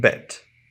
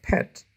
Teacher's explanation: the sound B is voiced because it makes the vocal cords vibrate while pet the sound p is voiceless because the air goes through the vocal cords without any vibration